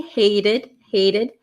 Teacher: notice that t becomes a flap